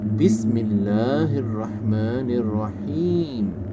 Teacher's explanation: اس بسم اللہ میں آپ نے اللہ کا نام موٹا نہیں کرنا، کیونکہ یہاں پہ زیر کے ساتھ ہے، اور رحمان الرحیم ہے کو آپ نے گلے کے مخرج سے نکالنا ہے۔